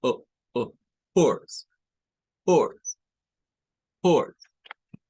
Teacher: es la o pero es la o con el glotal Stop decíamos que es cuando detenemos aquí el sonido de la O y lo cortamos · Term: glottal stop